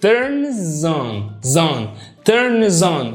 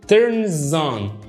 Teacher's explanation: فلو عندي كلمة بتنتهي بصوت ساكن والكلمة اللي بعد كده بادئة بصوت متحرك، هتيجي على الكلمة اللي بادئة بصوت المتحرك ده واديها الصوت الساكن وقول turns on. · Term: بربط الكلام ببعضه